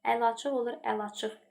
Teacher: Müayinə olduğu kimi, dəhşət olduğu kimi, əl-açıqda isə i düşür